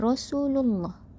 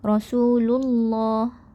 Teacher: Sebelum lafaz Allah ada huruf berbaris dhammah. Jadi kita akan membaca dengan berat pada lafaz Allah.